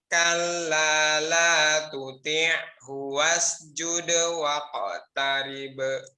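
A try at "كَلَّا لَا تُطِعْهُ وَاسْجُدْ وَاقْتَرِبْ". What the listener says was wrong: Wasnya keluarkan, sofir dan juga hamesnya. Jadi jangan cepat-cepat ditarik ya. Wasjud ini tadi kesalahan yang sering sekali terjadi ya, yaitu huruf sin ya. Jadi huruf sa-nya.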